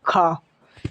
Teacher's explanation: ये दोस्तों स्पर्श व्यंजन है, कंठ से बोला जाता है खा, और अघोष भी है और महाप्राण भी है